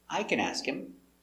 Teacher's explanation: It's a positive statement. The intonation goes down at the end.